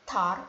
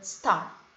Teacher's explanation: the sound in the word tar is normally pronounced with a stronger puff of air than is present in the sound in the word star. Ya, jadi bunyi t pada tar dan t pada star itu adalah allophone.